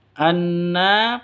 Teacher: Ya, gunnah musyaddadah atau gunnah asli. Anna dengung dua ketukan ya gunnahnya